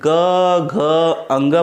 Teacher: क ख बोलने में नहीं होगा, लेकिन ग घ अंग बोलेंगे तो स्वर तंत्रियों में कंपन होती है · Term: सघोष